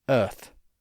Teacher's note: if you have a non-rhotic accent, like in much of England, Australia, and New Zealand, you probably don't pronounce the R sound in those words, but you still have that vowel merger.